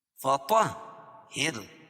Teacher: طا کو موٹا پڑھیں گے اور ہا کے اوپر تشدید ہے، تشدید والا حرف سختی کے ساتھ پڑھا جائے گا